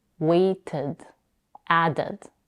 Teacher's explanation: If the answer is yes, like in the case of wait and add, we add a whole syllable in the past tense. In other words, we pronounce the ed as ud, waited, added.